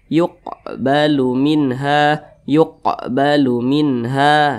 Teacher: Jadi qalqalah kecil, jadi pantulannya itu kecil saja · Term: qalqalah sugra